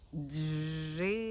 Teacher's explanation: на першому місці твердий приголосний Дж на другому місці голосний звук и і на останньому третьому місці твердий приголосний п в цьому слові